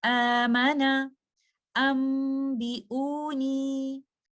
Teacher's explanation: دونوں صورتوں میں مد البدل کے 2 کاؤنٹس کی اسٹریچنگ کے ساتھ ہی آپ ان الفاظ کی ادائیگی کریں گے